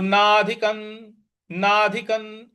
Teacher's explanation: जो नाधि क के ऊपर जो अनुस्वार है उसके आगे त है, इसलिए वहां पे न का उच्चारण हम लाएंगे